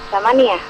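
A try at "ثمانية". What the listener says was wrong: Samaniyah. Iya, panjang pendeknya diperbaiki.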